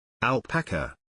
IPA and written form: ælˈpæk.ə (Alpaca)